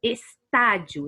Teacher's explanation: o Tá, que é a nossa sílaba tônica, é a antepenúltima